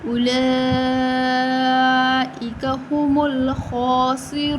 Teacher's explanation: بڑی مد ہے 5 الف کے برابر لمبا کریں گے